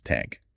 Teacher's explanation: they might replace the eth sound with t or d